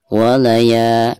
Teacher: ketika membaca ya-nya di sini dihukumi martabai dan dibacanya dua harokat karena ada harakat fathah lalu berhadapan dengan alif.